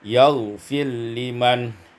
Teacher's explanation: idghamur ra fil lam, diidghamkan ra pada lam maka menjadi yaghfir liman.